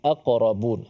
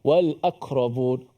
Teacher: Sebagaimana kita maklum, huruf qaf antara huruf merupakan salah satu daripada huruf-huruf qalqalah. Bila dia mati, kita kena pantulkan bunyi qaf itu.